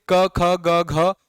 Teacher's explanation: कंठ से क ख ग घ और हा निकलता है